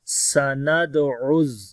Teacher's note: سین کے اندر صفت ہمس ہوگی، دال کے اوپر قلقلہ کریں گے، عین کو گلے کے درمیان والے حصے سے پڑھیں گے. سَنَدْعُ، زا کے اوپر تھوڑی سختی ہوگی اور با کو لمبا کریں گے، الف مدہ ہے، رکیں گے تو تا ہا بن جائے گی.